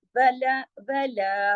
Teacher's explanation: वाव व एक हरकत है, ला दो हरकत खींचा जाएगा क्योंकि उसके साथ अलिफ भी है